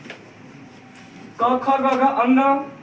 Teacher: क से लेके म तक की जो वर्णमाला है उसको बोलते हैं स्पर्श व्यंजन। क, ख, ग, घ, अंग, इसको हम लोग कंठ उच्चारण बोलते हैं